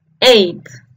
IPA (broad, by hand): eɪt